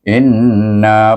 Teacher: baik dua suku kata satu Hamzah ini dengan nun sukun itu Nun bertasydik kita baca dengan wajibul gunah jadi bunyinya dua harakat in ada bunyi dengung di Batang rongga hidung kita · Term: wajibul gunnah